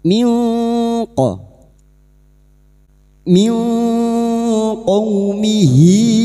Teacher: maka bunyi nun sukun dibaca samar dan mendengung selama tiga harakat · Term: ikfa hakiki